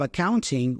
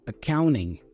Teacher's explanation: Notice that we have the and-T combination there. Usually, especially in American English, that T goes away, so we pronounce the N instead.